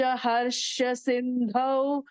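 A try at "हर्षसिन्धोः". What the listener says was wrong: The third line, harsha sindhoho, not thou.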